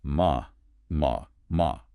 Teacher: the syllable ma can mean completely different things depending on the pitch of your voice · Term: tone